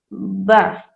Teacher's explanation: دونوں لپس کا جو گیلا حصہ یعنی جو انر لپس ہے اسے جو ہم ٹچ کریں گے تو حرف با ادا ہوگا